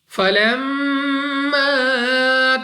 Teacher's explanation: میم مشدد غنہ کر کے پڑھتے ہیں یعنی ناک میں لے جا کر پڑھنا ہے